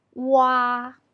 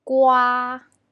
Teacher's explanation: pronunciation is a transition from U to ah o is short and quiet while ah lasts long and Loud